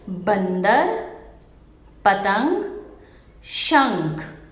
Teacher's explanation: इन शब्दों का उच्चारण करते समय आपने ध्यान दिया होगा कि ध्वनि यानी उच्चारण की ध्वनि नाक से निकल रही है और उच्चारण अधिक जोर से हो रहा है। अतः हम कह सकते हैं कि जिस वर्ण का उच्चारण करते समय हवा केवल नाक से निकलती है, उनकी शिरोरेखा के ऊपर केवल बिंदु लगाया जाता है, जिसे अनुस्वार कहते हैं।